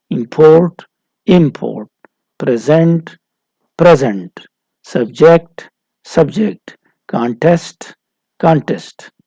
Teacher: ورب کے لیے فائنل سلیبل سٹریس ہوتا ہے، ناؤن کے لیے فرسٹ سلیبل سٹریس ہوتا ہے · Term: سٹریس کا چینج